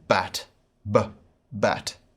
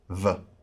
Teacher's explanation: the erasmus pronunciation is like a hard b sound as in bat ba bat according to the modern pronunciation this is more of a soft sound like v in vat